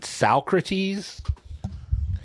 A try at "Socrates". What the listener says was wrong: You're putting an R where it doesn't belong.